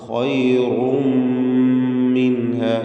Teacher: ഖൈറും, റായിന് തടിപ്പിച്ചുകൊണ്ടുള്ള ശബ്ദം കൊടുക്കുക. തൻവീൻ, റായിൻ്റെ തൻവീനിന് ശേഷമുള്ള മീമിൽ പൂർണ്ണമായും ലയിപ്പിച്ച് മണിക്കണം. ഖൈറും മിൻഹ, ഇദ്ഗാം ബിഗുന്ന കാമിൽ.